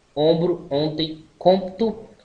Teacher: fechado posterior nasal arredondado